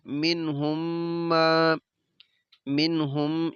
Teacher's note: یہ میم ساکن ہے، اس کے بعد میم متحرک ہے، تو ادھر ہم نے ادغام اور غنہ دونوں ہی کرنے ہیں